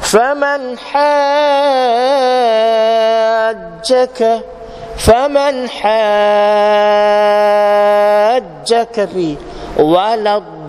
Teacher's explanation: Bukan mesti jim ke apa ke, ada satu huruf yang bertanda tasydid. Itu mad lazim kalimi musaqqal, hukum dia mesti dibaca 6 harakat.